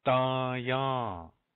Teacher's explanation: 2 nasals in there. Can you hear that? I'll say it really slow. Daya. They're both A nasals.